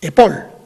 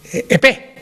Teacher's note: En francés la S ha desaparecido de la final de sílaba.